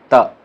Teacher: त बोलने से क्या होता है? दांत टच करता है